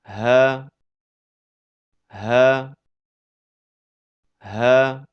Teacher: Huruf ha keluar dari pangkal tenggorokan.